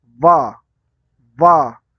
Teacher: आपके ऊपर वाले दांत हैं ना, वो नीचे वाले होठों से जुड़ रहे हैं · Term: दंतोष्ठ्य